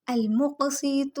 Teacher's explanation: قوف ساکن کلکلا ہوگا، حرکت دیں گے، آواز کو جنبش دیں گے، اور قوف نقطہ والا موٹا ہوگا